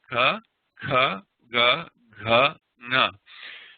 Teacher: these velar sounds, they're in the back of the throat.